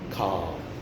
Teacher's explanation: So now with car, the tongue goes down and back.